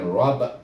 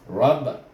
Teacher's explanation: ra baris atas ra, bertasydid dengan huruf ba, bunyinya rab. Rab bunyinya, iaitu ra baca dengan tebal. Dan kemudian ba baris atas bunyi ba tapi dimati dengan ha kerana wakaf di sini.